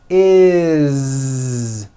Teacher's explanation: It's never is, unvoiced, never. It's always is with a voiced Z.